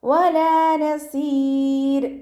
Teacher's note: അപ്പോൾ റോക്ക് സുക്കൂന്, മുന്നെയും സുക്കൂന്, അതിൻ്റെ മുന്നേ കെസ്റയുള്ള അക്ഷരം വന്നാൽ റോക്കിനെ നമ്മൾ താഴ്ത്തിയാണ് ഉച്ചരിക്കുക കേട്ടോ, ലൈറ്റാക്കിയിട്ട് ഉച്ചരിക്കുക